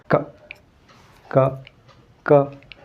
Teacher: your vocal cord doesn't vibrate